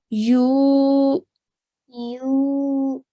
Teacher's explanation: we need to stretch that U sound for 2 seconds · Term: waw madiyya